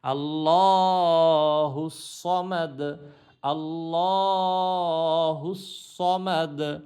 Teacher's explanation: যখন থামবো তখন দালটা উচ্চারণ করবো, শুধু পেশটা পড়তে হবে না